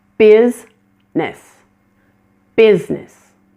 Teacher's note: Business is another one of those words that has a missing middle syllable. The I in the middle of the word is not pronounced at all, and this word becomes 2 syllables. It's business.